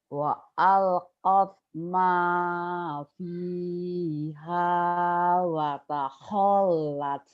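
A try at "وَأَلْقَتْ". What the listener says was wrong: Wa alqat. Jangan karena lagu tiba-tiba jangan, lamnya idhar. Jangan ditahan, dilepas. Wa alqat wa alqat ma wa alqat ma fiha wa takhallat.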